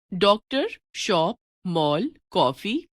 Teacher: इनमें लगने वाला स्वर ना तो हिंदी का ओ स्वर है और ना औ। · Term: आगत स्वर